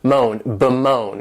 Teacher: this verb has 2 syllables, and the stress is on that second syllable